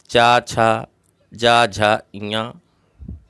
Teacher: इनका उच्चारण स्थान तालु होता है, मुंह के ऊपर वाला भाग।